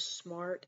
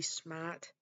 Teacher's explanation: common traits of the New England accents are the dropping of the r sound at the very end or within a word